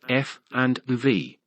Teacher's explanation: labia dentals sounds produced with the upper teeth and the lower lip